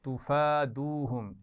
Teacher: ایک تو کھڑا زبر ہے اور دوسری واو مدہ ہے، کھینچ کر پڑھیں گے دونوں کو